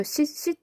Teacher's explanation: 이때 발음 나는 이 소리가 다 받침에서 디귿으로 소리가 나는 거예요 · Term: 디귿 소리